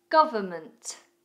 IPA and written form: ɡʌvəmənt (Government)